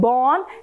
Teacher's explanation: the soft palate is lowered a little, but then the air passes through the mouth as well as through the nose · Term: nasalized sounds